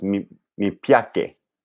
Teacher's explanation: So all C's sound like CH. So they're all affricates.